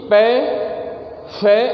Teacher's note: दोनों होठ साथ में मिलने से ध्वनि बाहर निकलती है, तो ये ओष्ठ कहलाते हैं